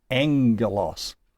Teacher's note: when we have it in combination with itself as a gamma-gamma, it makes an ng sound.